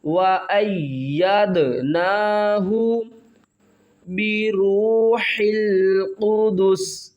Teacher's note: حمزہ کو یا کے ساتھ ملائیں گے، یا کے اوپر سختی کریں گے، یا کو آگے دال کے ساتھ ملائیں گے، دال ساکن ہے تو یہاں پر قلقلہ کریں گے، یعنی دال کی آواز کو ہلا کر پڑھیں گے۔